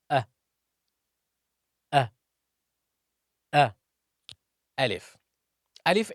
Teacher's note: Al if is pronounced from the empty space of the mouth and the throat